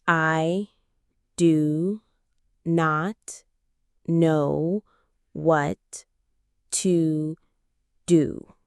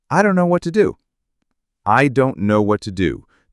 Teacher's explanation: The important words are don't, know, and do. The other words are unstressed. And the phrase I don't know is so common, it gets squished together into I don't know.